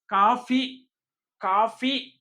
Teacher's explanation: కాఫీ లోని ఫ అనేది కూడా దంతోష్ట్యం కిందికి వస్తుంది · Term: దంతోష్ఠ్యం